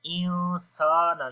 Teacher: نون ساکن کے بعد سین آگے اخفا ہوگا، تو یہاں پر جو اخفا ہوگا وہ پتلا اخفا ہوگا، موٹا نہیں پڑھیں گے اس کو ، انسان، سین کو لمبا کریں گے، الف مدہ ہے، ان